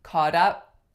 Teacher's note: you can also get a flap combining two words if you have a word ending in the letter T or